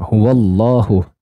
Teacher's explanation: Allahnya, lamnya dibaca panjang satu alif.